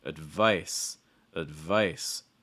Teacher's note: when you say advice the stress is on the second syllable right so that first syllable is very fast reduced not very strong